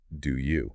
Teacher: we're naturally inserting a w sound there to bridge the gap between those vowels